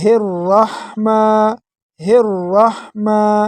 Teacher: را کو موٹا کر کے پڑھیں گے اور میم کو ایک الف کے برابر کھینچیں گے۔ میم کو ایک الف کے برابر کھینچیں گے۔